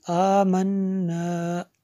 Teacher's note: نون میں شدد ہے اس لیے یہاں پہ غنہ ہوا